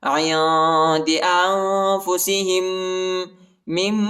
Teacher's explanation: ہا کو دوسرے میم کے ساتھ ملائیں گے، دوسرے میم پر شد آئے ہے اور غنہ کریں گے